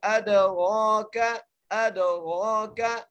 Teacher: کاف کو بغیر کھینچے پڑھنا ہے, بھری کر کے. ادراک, ادراک, موٹی کاف نہیں ہے بھری کاف ہے